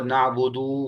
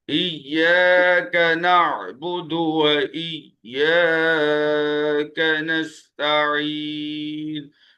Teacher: اگر ہم دال کے پیش کو کھینچ دیں تو اس کا مطلب کہ ہم یہاں پر واو کا اضافہ کر رہے ہیں